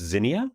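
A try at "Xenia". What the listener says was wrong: Yeah. Almost like a KS at the at the front of that.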